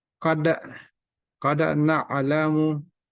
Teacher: ketika dia sukun otomatis bacanya dipantulkan atau qalqalah